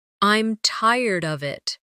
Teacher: with of sounding almost like uh These weak forms are part of the rhythm of English.